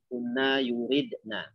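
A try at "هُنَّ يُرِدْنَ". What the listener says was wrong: Naam, hunna yuridna.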